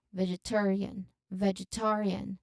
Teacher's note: it has five syllables, and the main stress is on the third syllable